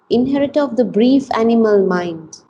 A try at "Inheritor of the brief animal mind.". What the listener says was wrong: Mind, you want to raise your voice a little bit. Inheritor of the brief animal mind.